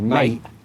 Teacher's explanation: When you say mate, do you ever say it quite quickly and do it with a kind of glottal stop to where you don't actually pronounce the T